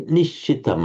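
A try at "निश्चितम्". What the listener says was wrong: It's a sh. For some, so the way you pronounce it was more like a s, nischitam.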